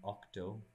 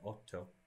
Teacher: When Latin octo became Italian otto, that was an assimilation change, a total assimilation change.